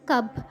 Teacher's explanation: যেহেতু এই ক যোগ ব এটা কব হওয়ার কথা বাংলায়। কিন্তু হিন্দিতে আমরা ও উচ্চারণ করবো না। একটু আ ছোট আ উচ্চারণ করব। তাই আমরা এটাকে পড়বো কাব।